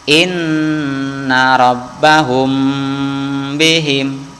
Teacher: ba Emangnya disebut dengan Idhar syafawi izhar itu artinya jelas hatinya huruf mim ya ini jelas dan tidak usah didengungkan